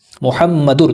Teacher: जहाँ आप देखें तो हम मिलाते हैं मुहम्मदुर, दाल के ऊपर 2 पेश है ना, दाल को जब रॉ से मिलाते हैं तो ऊपर तनवीन है, تنوین کے ساتھ جب را کو ملایا تو یہاں پر نون کی آواز خاموش ہوتی ہے، اس کو کہتے ہیں ادغام بلا غنہ، غنہ کے بغیر ملانا۔ · ادغام بلا غنہ۔ تو ہم ملائیں گے تنوین کو را کے ساتھ تو غنہ کی آواز نہیں آئے گی